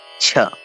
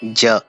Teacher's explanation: एते च वर्गीयपञ्चवर्णाः तालव्यवर्णाः इति कथ्यन्ते, यतो हि एतेषां वर्णानाम् उच्चारणस्थानं भवति तालुः।